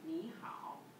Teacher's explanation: Like, when we have two third tone words in a row, it can be awkward to say. Ah, so to make the words flow better, you change the first word to second tone